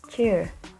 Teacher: The ch sound is called voiceless palatal affricates